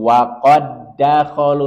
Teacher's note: Dal pertama bersukun tidak dibaca sehingga seolah-olah Dal yang pertama ini hilang diidamkan atau dileburkan ke Dal yang kedua langsung masuk ke Dal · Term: idgham mutamatilain